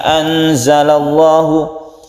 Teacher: lamjalalah dan dibaca tafkhim atau tebal